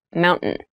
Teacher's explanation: when you pronounce this word in fast speech, it sounds like mountain. The T sound is reduced.